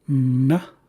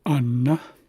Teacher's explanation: I tend to leave out the E or the schwa